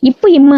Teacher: மேல் இதழும் கீழ் இதழும் இணைப்பதனால் பிறக்கக்கூடியது